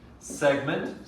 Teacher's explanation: segment stressed on the first syllable